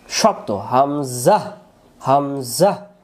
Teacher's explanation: হামজা অক্ষর হলকের হলক মানে গলা প্রথম থেকে শক্ত করে পড়তে